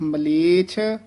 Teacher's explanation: ਮਲੇਸ਼ ਸ਼ਸ਼ੇ ਨਾਲ ਨਹੀਂ ਬੋਲਣਾ ਹੈ, ਛੱਛਾ ਉਚਾਰਨ ਕਰਨਾ ਹੈ